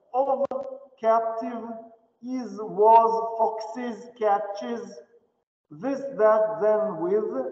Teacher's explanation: Озвончение глухих щелевых в безударных слогах.